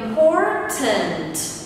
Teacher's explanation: Từ này bao gồm có vô 3 tiết và âm tiết số 2 là âm tiết được nhấn, nên ngữ điệu sẽ là la la la.